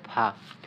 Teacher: নিচের ঠোঁটের পেট সামনের উপর দুই দাঁতের আগার সঙ্গে লাগাইয়া